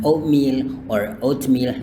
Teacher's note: Bunyi T-nya tidak dilafalkan juga nggak menjadi masalah ya. Jadi bisa bilang oatmeal or oatmeal, no problem.